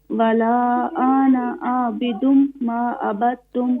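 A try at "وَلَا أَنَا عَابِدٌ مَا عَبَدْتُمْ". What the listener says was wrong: ولا انا عابد, یہاں الف نہیں پڑھیں گے, صرف اس کو نون پر زبر پڑھیں گے. ولا انا عابد.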